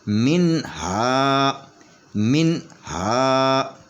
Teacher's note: کر پڑھیں گے، تو کیونکہ نون جو ہے وہ ساکن ہے، نون ساکن کے بعد ہا ہے، تو ہا جو ہے وہ حروف حلقی میں سے ہے، تو یہاں پہ اظہار ہوگا، اس نون کے اوپر آواز کٹ جائے گی